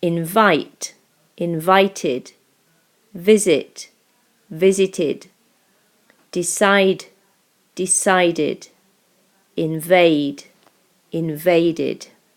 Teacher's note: we pronounce it like an id sound after d and t sounds.